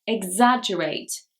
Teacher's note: Number 32 is actually the verb, exaggerate. Here, the stress is actually on the 2nd syllable.